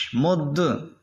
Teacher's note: دال حرف قلقلہ ہے، اور حروف قلقلہ جب مشدد ہوتے ہیں تو ان میں خوب جماؤ کرتے ہیں